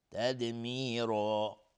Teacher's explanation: تدمیرا دال قلقله میخواد اینجا و تدمیرا را هم حکمش استعلا چون تنوین نصب روشه و الف هم تابع را غلیظ تلفظ میشه، حکم استعلا به خودش میگیره